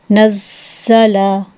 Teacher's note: زا میں سیٹی کی آواز پیدا ہوگی